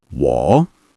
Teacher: Keep it low and steady. This is a third tone.